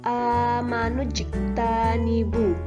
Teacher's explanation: maka huruf jim dibaca mantul karena huruf jim ini adalah salah satu huruf qalqalah